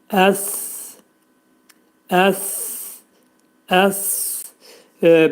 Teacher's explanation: dilimiz iki dişlərin arasından xəfifcə şəkildə çıxarılaraq pərtək S hərfini demək lazımdır